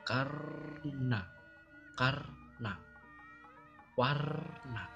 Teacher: Kita rasakan saja ketika mengucap na, karna, setelah R mati ketemu na dalam satu kata itu pasti kita mengucap nanya itu juga lidahnya masih ditekuk ke langit-langit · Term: na tebal